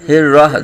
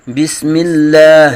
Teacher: ہر راہ، ٹھیک ہے جی، ہر راہ دونوں کو ہا نہیں پڑھیں گے بلکہ رحمان کی ہا جو ہے اس کو حلق کے درمیان سے اور بسم اللہ کی ہا جو ہے اس کو حلق کے نیچے سے ادا کریں گے